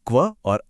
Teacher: लेकिन व्यंजन यानी कॉन्सोनेंट्स हमेशा स्वरों पर निर्भर रहते हैं। मतलब आप बिना स्वर के व्यंजन बोल ही नहीं सकते। जैसे क की जो आवाज है ना वह असल में क और अ